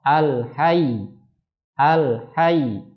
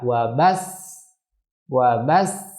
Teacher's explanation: Yang ketiga ada istilah nabr ya, yaitu menekan huruf tertentu di mana bunyinya agak lebih naik dari huruf yang lain di sampingnya. Nabr terjadi pada yang pertama huruf yang bertasydid, yakni ketika waqaf.